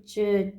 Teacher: ठीक है, और जो च वर्ग होता है, जब आप इसको बोलोगे तो आपकी टंग देखो यहाँ पे च यानी तालू पे जाके लगेगी। ठीक है, ये अपने होते हैं तालु व्यंजन।